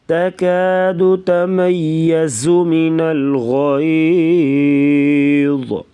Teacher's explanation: غین اور ضا کو پر پڑھیں گے